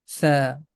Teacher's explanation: We can represent this sound with th. The tip of tongue is touching with the edges of frontal teeth, and the small portion of the tip comes out from the mouth.